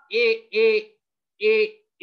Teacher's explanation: ए म्हणताना तालुला तुमच्या जिभेचा स्पर्श होतं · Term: तालव्य